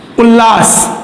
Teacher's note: अब आप देखिए यहाँ उत और लास है, तो यहां पर जो शब्द बनेगा वो होगा उल्लास। अब यहां ल के कारण ये त जो है वो भी ल में बदल गया, बाद वाली ध्वनि के अनुसार इसने अपने आप को परिवर्तित कर लिया है।